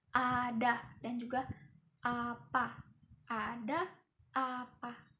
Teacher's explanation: Nah, posisi mulutnya itu terbuka di sini. Oke, cirinya itu lidah rendah, turun dan agak ke depan. Nah, bibir itu terbuka lebar. Nah, contohnya jika kita mengucapkan kata ada dan juga apa, ada, apa. · bunyi vokal ini paling terbuka. Nah, energi suaranya tuh besar ya.